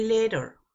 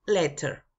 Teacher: el estilo americano Es que la t suena mucho como r suavecita pero originalmente los ingleses la pronuncian como t